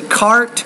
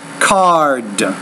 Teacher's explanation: The T is a voiceless consonant. The D is a voice consonant. When the T is at the end of the word, the vowel which precedes it is a little bit shorter.